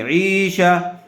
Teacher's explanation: عین کو تھوڑا کھینچ کر پڑھیں گے. شین کے اوپر زبر ہے اس لیے شین کو جلدی پڑھیں گے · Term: یا مدہ